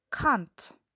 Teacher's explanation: The non-initial, most commonly final T is a glottal stop instead of an alveolar stop. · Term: T glottalization